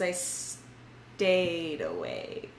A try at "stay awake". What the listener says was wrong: Emphasis on the wrong syllable. It's not stay awake. It's stay awake.